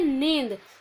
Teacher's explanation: देखिए नींद हम लिखते हैं, तो नींद जब हम लिखते हैं तो हम इसको ऐसे नहीं पढ़ते, निनद नहीं पढ़ते, इसको हम पढ़ते हैं नींद। वो इसलिए पढ़ते हैं क्योंकि ये अनुनासिक है, अनुस्वार नहीं है।